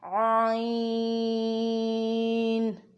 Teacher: مد آ رہا ہے، تو عین کو بھی 4 الف کے برابر کھینچ کر پڑھنا ہے · عین جو ہے درمیانے حلق سے ادا ہوگا